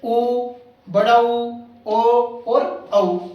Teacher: तो वृत्ताकार स्वर जिनको बोलने में, जिन स्वरों का उच्चारण करने में हमारे जो होठ है उनका आकार कैसा हो? गोल।